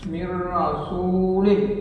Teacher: Kemudian ada idgham bila gunnah, nun mati ketemu dengan ra, mir rasulin, tidak terlalu tebal ra-nya